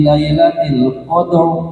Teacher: Qadr dibacanya ro tafkhim karena ro sukun didahului fathah